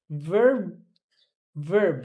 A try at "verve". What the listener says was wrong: Okay. Verve. There's a V here. Verve, verb.